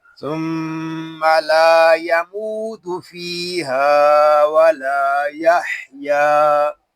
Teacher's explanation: ہا جو ہے یہ حلق کے درمیان والے حصے سے ادا ہوگا